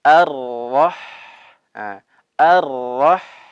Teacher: Kemudian kata Ar-Rahman, di sini kita dapati huruf ha dalam keadaan sukun. Sama, huruf ha salah satunya memiliki sifat rikhwah atau rokhwah, yang artinya adalah mengalir. Jadi dialirkan.